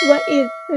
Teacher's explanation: وَإِذْ، ذال کو ہلانا نہیں ہے، وَإِذْ نہیں کرنا، اور ذال کو باریک پڑھیں گے، لائٹ لیٹر ہے، نرمی سے ادا کریں گے